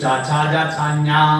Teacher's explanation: നാം അണ്ണാക്ക് പതിച്ച് പറയുന്ന അക്ഷരങ്ങൾ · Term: താലവ്യം